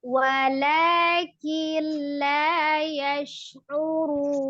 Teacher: Ini ada nun sukun ya, nun sukun bertemu dengan huruf lam ya, nun sukun bertemu dengan huruf lam, termasuk tadi ya, idgham bila gunnah